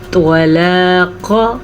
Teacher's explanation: توا کو پر پڑھنا ہے اور قاف کو بھی پر پڑھنا ہے. یہ دونوں ہمیشہ ہی پر پڑے جاتے ہیں غین کے ساتھ.